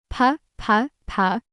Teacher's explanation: You start with your lips together, just like with B, but this time you blow out a much stronger puff of air. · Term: puffing pa